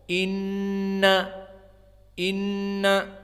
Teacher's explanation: karena dia ghunnah makhrajnya berpindah dari asal makhraj torful lisan